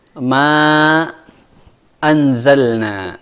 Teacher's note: Ya, di sini ada ma anzalna, tapi dia agak pendek karena dia mad jaiz. Mad jaiz adalah mad yang dipanjangkan 4 atau sampai 5 harokat di dalam riwayat Hafs